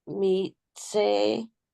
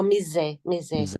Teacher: try to make it less of a TS and more of a Z sound